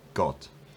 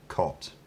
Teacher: in Spanish, where you'd have an unaspirated plosive, got, in English you'd have a much more aspirated one, cot. It sounds like there's a bit of aspiration there.